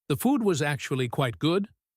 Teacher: He stresses actually to pleasantly surprise her